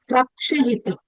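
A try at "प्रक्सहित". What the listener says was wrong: It is not sha, it is sa. sahita, prak sahita, pra.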